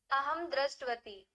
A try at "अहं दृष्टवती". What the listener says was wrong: दृष्टवती। सम्यक्, स्मरणे अस्ति भवत्याः।